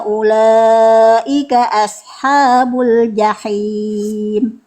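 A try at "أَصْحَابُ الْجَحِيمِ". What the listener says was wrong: tebalkan huruf shad bund As huruf tebal.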